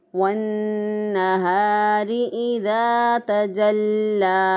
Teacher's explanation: लाम के ऊपर शद है, इसलिए इसको मज़बूती और क़ुव्वत से पढ़ा।